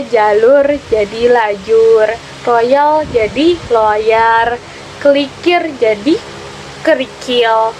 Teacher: Metatesis adalah perubahan urutan bunyi ponemis pada suatu kata